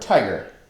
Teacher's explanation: Trochic, stressed, unstressed, as in the word tiger.